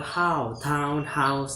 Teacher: Ow begins at the point between the back and front open position and moves toward the position of RP. Ooh, the lips changing from the neutral open to the weak lip rounded position.